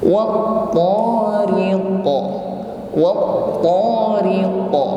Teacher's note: Was-samai wa tariq, riqa ditutup dengan huruf qaf, karena huruf qaf di sini berada di akhir ayat, maka huruf qaf menjadi sukun. Dan ketika huruf qaf harokatnya sukun atau di akhir kalimat, maka nampak sifat qalqalah atau ada suara yang memantul.